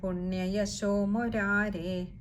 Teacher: മുരാരേ എന്ന് പറയുന്നിടത്ത് ഏകാരം നീട്ടിയെടുക്കണം